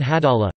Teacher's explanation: This heavy Lām is thus articulated with the entire body of the tongue rather than its tip alone. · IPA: [ɑɫˈɫɑː(h)]